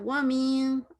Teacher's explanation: من کو نا نون کو آپ واضح نہیں کریں، نون غننے کی طرح پڑھیں، جیسے اردو میں نون غنہ ہوتا ہے نا، می جی می ماں جیسے کہتے ہیں.